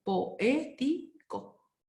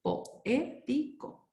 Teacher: No puede estar todo junto porque recién aprendimos que dos vocales abiertas inevitablemente se van a separar porque se produce un hiato